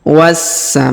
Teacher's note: huruf dza kita panjangkan dua harakat karena di depannya terdapat Alif